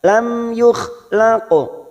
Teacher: Lam yukhlaqu, laqu qaf sukun yang mati di tengah kalimat, qalqalah sugra